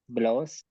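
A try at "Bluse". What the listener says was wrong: ब्लूजे, ब्लोज क्या होता है, ब्लूजे। ब्लू ऊ होता है ना, ये तो ब्लू, ब्लूजे।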